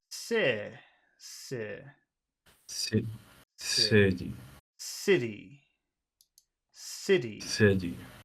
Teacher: it's got two syllables which syllable has the big sound in it first one